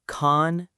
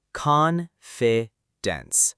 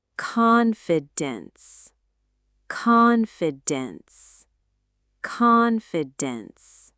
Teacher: The stress is on the first part, con.